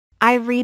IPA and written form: riːd (read)